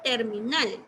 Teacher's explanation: Voy a marcar acá la sílaba nal, que sería la más fuerte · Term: sílaba más fuerte